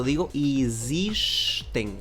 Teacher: aquí la X hace función como de zumbido, ¿no? Y la E al inicio suena como una I